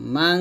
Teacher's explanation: লাহু মা, এক আলিফ টান দিবেন, মা ফিস সামাওয়াতি ওয়া মা ফিল আরদ। মাং, এখানে ইকফা গুণা করতে হবে